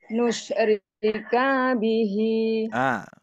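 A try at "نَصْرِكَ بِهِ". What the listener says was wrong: K-nya hati-hati, Ibu. Kepanjangan.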